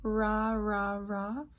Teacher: like your tongue is coming up to this alveolar place, but it's not touching and it's not close enough to cause friction. So it's the same as maybe the S sound or the Z sound, but bring your tongue farther down and it'll turn into the ra, like za, ra. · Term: approximant